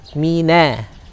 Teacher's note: Mi ketemu dengan nun fathah na, tipiskan nunnya, tarik.